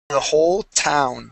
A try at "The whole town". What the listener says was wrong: Now, what you're doing, you're placing your tongue against the back of your teeth and saying "town." All right. You want to move your tongue back, and it arches up like this, and you actually touch the top of your mouth. So let's say your teeth are right here.